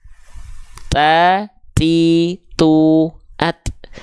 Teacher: modul saya yang lama dulu nih Nah huruf ta perhatikan tuh huruf ta itu punya sifat namanya adalah hams tapi kadarnya ternyata hanya berupa percikan nafas saja bukan mengalir nafas